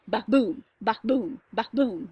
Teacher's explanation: unstressed stressed pattern of ba boom ba boom ba boom · So it's that iambic, unstressed, stressed pattern